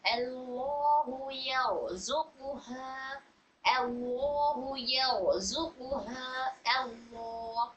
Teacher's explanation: لام جلالہ کو پر پڑھنے کا قاعدہ ہو رہا ہے، کیونکہ لام جلالہ سے پہلے والے حرف پر فتحہ ہے تو موٹا پڑھیں گے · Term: را کو پر پڑھنے